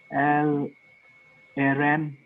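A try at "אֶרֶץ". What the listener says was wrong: This is Sade. This is Sade. Final form of Sade.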